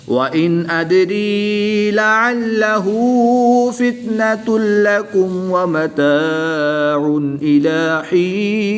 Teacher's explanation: دو پیش کی تنوین کے بعد لام حروف یرملون میں سے ہے تو یہاں پر ادغام بلا غنہ ہوگا، یہاں پر بھی غنہ نہیں کریں گے.